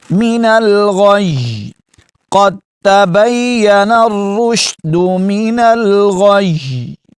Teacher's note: آخر میں آپ نے یا کو ہلانا بھی نہیں ہے، من الغی ایسے بھی نہیں کرنا، یا مشدد پڑھنی ہے لیکن ہلانا نہیں ہے